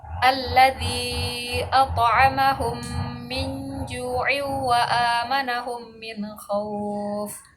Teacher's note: Idgham mimi adalah membaca seperti menyuarakan mim rangkap atau ditasydidkan dan wajib dibaca dengan dengung apabila ada huruf mim sukun bertemu dengan huruf mim.